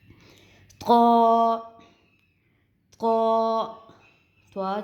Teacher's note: نوک زبان اور ثنایا علیہ کی جو جڑیں ہیں ان سے اس کی ادائیگی ہوگی